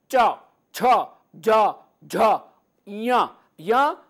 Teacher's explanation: सब तालू से उच्चारित होंगे च छ ज झ ञ य ता लू से और नासिका